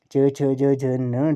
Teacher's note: च्वर्ग में च छ ज झ न जो है वो आपके तालु है इसका उच्चारण स्थान।